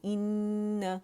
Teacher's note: ان حرف غنہ مشدد ہے تو اسے 3 کاؤنٹس دیں گے · کیونکہ 2، 2.5 اور 3 تک اس کو لے جا سکتے ہیں۔ حرف غنہ مشدد جو ہے یہ اکمل گریڈ کا غنہ ہوتا ہے، دی موسٹ کمپلیٹ لانگسٹ غنہ